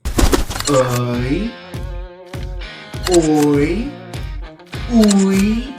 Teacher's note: Ook bekend as twee klanke want dit is waarvoor duftonge staan. Dit is twee verskillende oop klanke wat direk na mekaar uitgespreek word. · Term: diftonge